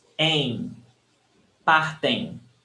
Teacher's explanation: When you have em, am at the end of a word. Aim, aim. The M is not pronounced. Aim. It's very nasal.